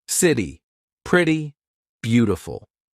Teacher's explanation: This is when T sounds like a very quick D. Very big in American pronunciation. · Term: flap T